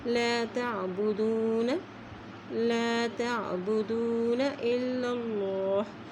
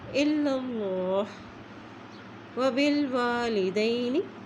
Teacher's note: اللہ کے نام سے پہلے زبر آ گئی اس لیے اللہ کا نام موٹا ادا کیا جاتا ہے